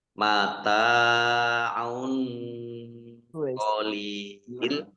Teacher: Mata'un tak fathah alif mat tabi'i panjang 2 harokat, domah tanwin bertemu dengan huruf qaf, bacaan ikhfa dibaca samar-samar. Mata'un qalil, lam kasroh ya sukun mat tabi'i, tetapi karena di akhir kalimat atau karena bertemu dengan huruf terakhir yang dibaca sukun karena waqaf, maka menjadi mat aris lis sukun.